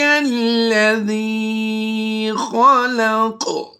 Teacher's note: قاف کو پر بھی کریں گے اور وقف کی وجہ سے قلقلہ بھی کریں گے۔ یہ زبر پر قلقلہ تو نہیں ہوتا، لیکن یہاں پر ہم اس زبر کو وقف کی وجہ سے جزم سے کنورٹ کریں گے تو یہ قاف ساکن بھی ہو جائے گا۔